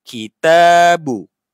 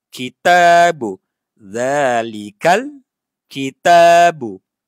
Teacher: ta baris atas ada alif kecil ni maknanya dia panjang. Tabu dua harakat.